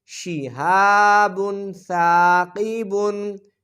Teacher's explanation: تنوین کے بعد حروف اخفا میں سے سا ہے تو لہٰذا یہاں اخفا ہوگا، غنہ ہوگا